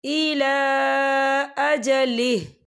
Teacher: वफ़ की सूरत में हा साकिन हो जाएगा